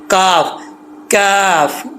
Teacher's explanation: زبان کی جڑ اوپر والے تالو کا جو سخت جگہ ہے کھردرا وہاں پر لگے گی تو کاف پڑا جائے گا